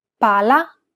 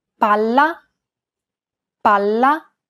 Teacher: double consonants must be pronounced clearly and held for longer periods of time in Italian. Failure to do so could result in miscommunication.